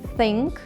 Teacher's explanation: висуваючи кінчик язика між зубками і спробуйте, не додаючи ніякого, е, звуку, просто пошипіти, як зміючка, випускаючи.